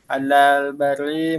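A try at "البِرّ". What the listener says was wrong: Birri, alal birri ya, jangan bari. Kalau bari artinya daratan. Kalau birri kebaikan.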